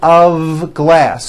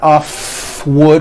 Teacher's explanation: i call the of exception many foreign speakers make this mistake even though the word of is spelled with an f we pronounce the word of with a voiced v